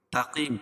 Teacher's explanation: تقیم تا کو باریک قاف کو پور اور وقف کی صورت میں یہاں مد عارض وقفی ہوگا کیوں اس لیے کہ حروف مدہ کے بعد سکون عارضی ہو تو اس کو مد عارض وقفی کہتے ہیں.